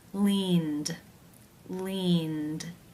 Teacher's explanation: of the verb in infinitive form is the n consonant sound this is a voiced consonant therefore it is case 2 where the e d is pronounced as the d sound